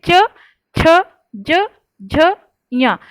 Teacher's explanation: हमारे जो जुबान का बीच का जो हिस्सा होता है वो ऊपर की तरफ छूता है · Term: तालु